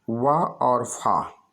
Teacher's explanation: ओठ से यानी ओष्ठ यानी दोनों ओठों से, पा वर्ग। दंतोष्ठ यानी नीचे का ओंठ और ऊपर का दांत